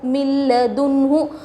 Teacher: نون ساکن کے بعد یرملون میں سے لام آ رہا ہے، بغیر غنّے کے ملا کر پڑھیں گے ، اس کو ادغام بلا غنّہ اور ادغام تام بھی کہتے